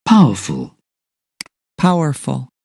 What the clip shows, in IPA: ˈpaʊə.fəl